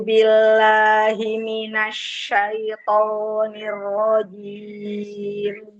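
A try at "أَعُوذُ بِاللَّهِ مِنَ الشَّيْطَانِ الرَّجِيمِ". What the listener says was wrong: Sekali lagi, ainnya masih ke hidung itu.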